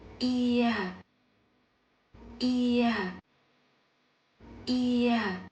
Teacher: You pronounce it by connecting the i and a sounds quickly, with your mouth slightly open.